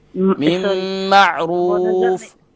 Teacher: मा में थोड़ा सा हमजा साकिना का जर्क महसूस हो रहा है, यहाँ हमजा साकिना नहीं है, यहाँ आइन है